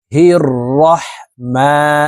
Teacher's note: মিমের উপরে খারা জবর আছে এই কারণে এই মিমকে এক আলিফ টেনে পড়বো